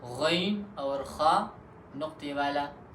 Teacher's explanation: ادنائے حلق یعنی گلے کا وہ حصہ جو منہ کے قریب ہے، تو اس سے بھی 2 حروف ادا ہوتے ہیں